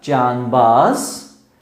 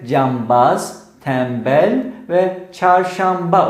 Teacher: Daha çok Türkçede yabancı illerden giren kelimelerde rastladığımız Nm benzeşmesi bir diş sesi olan N'nin dudak ünsüzü B'nin etkisiyle dudak ünsüzüne dönüşmesi olayıdır. Yani Farsçada can baz ya da tenbel, çarşanba kelimeleri.